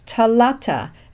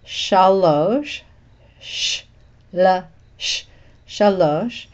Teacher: the T sound substitutes for the shin sound